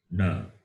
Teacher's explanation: the last letter, which is nasal, will be the combination of cerebral plus nasal